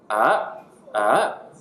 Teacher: Third tone goes down and up